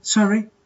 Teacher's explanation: you can say um sorry but in a rising intonation sorry in a rising situation an arising intonation this is an